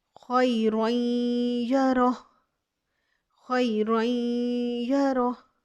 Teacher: अब देखिए रॉ, रॉ के ऊपर 2 ज़बर है, इसको हमने या के साथ मिलाना है, गुन्ना के साथ अदगाम करेंगे।